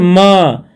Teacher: म का ओष्ठ प्लस नासिक